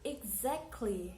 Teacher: The middle syllable is the stress.